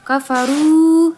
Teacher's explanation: pada huruf ro bertemu dengan wau sukun panjangnya dua harakat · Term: mad thai'i, mad tabi'i